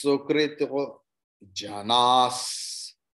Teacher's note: Visarga is there, but here it will not be janaha because it is not ending letter